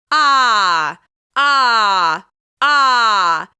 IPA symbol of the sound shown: a